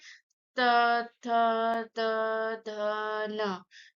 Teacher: इसका उच्चारण स्थान दंत है। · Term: त वर्ग